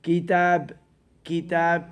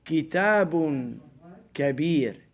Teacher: You stop at the word, so the last vowel doesn't sound.